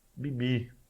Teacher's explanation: o segundo I, ele é longo